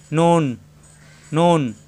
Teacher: নুন, জিহ্বার আগা উপরে তালুতে লাগবে,